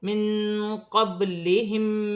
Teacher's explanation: نون ساکن میں اخفا ہوگا. قاف حرف اخفا میں سے، با ساکن ہے اور حرف قلقلہ میں سے ہے